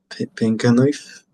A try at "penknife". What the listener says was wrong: We only pronounce it as pen knife. We don't pronounce the K, right?